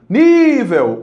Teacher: Olha, qual é a vogal que alonga? É o I. Nível. O I alongou, né? Então é a sílaba tônica.